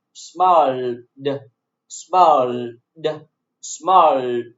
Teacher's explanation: You see l, l. L is voiced consonant sound, so ed is pronounced in voiced consonant sound too.